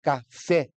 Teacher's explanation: a palavra é oxítona como é a palavra cá fé então a oxítona ela tem a última sílaba como sendo a mais forte